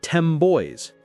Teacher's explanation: The phrase 10 boys might sound like 10 boys because the N sound changes to a M sound to get ready for the B in boys. It's more efficient for the lips.